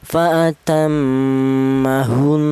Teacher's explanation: cara bacanya ini ghunah biasa dengung dua ketukan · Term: gunnah